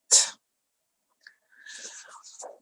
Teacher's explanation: We have to blow the air out, t, t, which is voiceless.